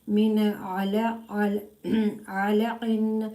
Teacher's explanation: This ain pronounced from the middle part of the throat, and this is mustaliya letter and kalkala letter, but there has a mustaliya letter because you can do the thick sound.